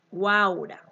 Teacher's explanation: vocal U, que es cerrada, más vocal A, que es abierta, más vocal U, que es cerrada, ¿verdad? Entonces van a ir en una sola sílaba. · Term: triptongo